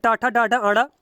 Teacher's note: यह मूर्धा का स्पर्श करते हैं इनको मूर्धन्य व्यंजन कहते हैं